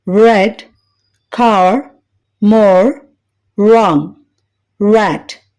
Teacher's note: నాలుక వెనుక భాగం ఎత్తుగా వెళ్లడం వలన నాలుక ప్రక్కలు వెనుక వైపు పళ్ళను తాకుతుంది